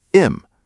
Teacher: Native speakers often drop the H at the beginning of words when they're not stressed. So, him sounds like im. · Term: dropping sounds